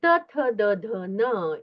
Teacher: और त थ द ध न, इसका दंत्य, मतलब दांत को स्पर्श करके उच्चारण होता है।